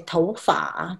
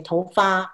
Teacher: In Taiwan, we say tou fa, that's the third tone.